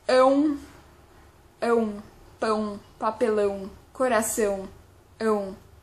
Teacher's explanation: Quand on dit EON, je pense que les sons, ils viennent plutôt au niveau du nez, donc c'est un son nasal.